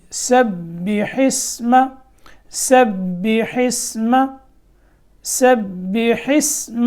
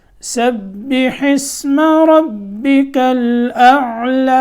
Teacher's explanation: سین کو با سے ملانا ہے تو یہاں تھوڑی دیر لگانی ہے، یعنی 2 حرفوں کی یہاں دیر لگے گی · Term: مشدد حرف